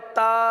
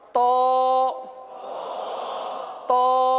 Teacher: مخرج ایک ہی ہے، صرف کیا کر دیا آپ نے، حرف کو پر کر دیا